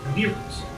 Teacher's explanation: my dialect of English has R colored vowels, which are essentially vowels that have been altered in such a way to sound a lot more like a R sound